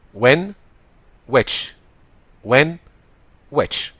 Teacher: يبقى ديت وان مش هوان. وويتش من غير اله ساوند او من غير الاتش، لكن ما نقولهاش هويتش